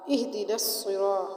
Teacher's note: ہا کو ہم حلق کے آخر حصے سے نکالیں گے، ہا اور حا میں فرق رکھیں گے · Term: چھوٹی ہا